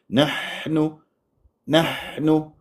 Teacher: ابالغ في الهمس بحيث اتعدى على صوت الحاء يصير به تعسف ويصير به بحه